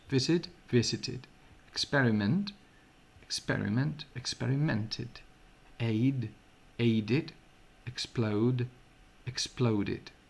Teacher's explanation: Quan l'últim so és un so T o un so D, com a visit, experiment, estic exagerant la T, aid o explode, la pronunciació és id.